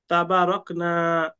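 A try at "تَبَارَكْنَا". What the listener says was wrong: টান হবে না।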